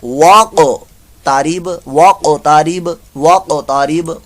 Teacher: क़ाफ साकिन का कलकला और वक्फ की सूरत